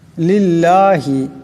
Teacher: পড়তে হবে ছোট আওয়াজে পড়তে হবে লিল্লাহি এখানে যে আল্লাহর লাম এই আল্লাহর লামকে পাতলা আওয়াজে পড়তে হবে